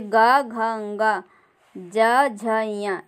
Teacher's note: वर्ग के तीसरे और चौथे और पांचवे, तीसरा, चौथा, पांचवा जो वर्ण होता है वो घोष ध्वनि होती है, जैसे ग, घ, ङ, ज, झ, ञ, इस तरह इनके उच्चारण के समय मुँह में कंपन होती है जहाँ से ये उच्चारित होते हैं, इसलिए इन्हें घोष वर्ण कहते हैं